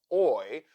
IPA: ɔɪ